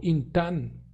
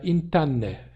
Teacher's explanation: o M se assimilou para N, que era a consoante final